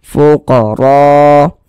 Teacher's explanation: Huruf ra memiliki harokat fathah, memiliki tanda baca fathah, maka dibaca tabkhim, dibaca tebal, sehingga pangkalisan kita naik terangkat ke atas ketika kita mengucapkannya.